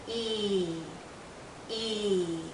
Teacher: is being pulled out because it's a long sound e e our tongue is generally High our mouth is closed again our lips are pulled and there's a lot of tension in this vowel sound tension means tight you feel it here in your cheeks and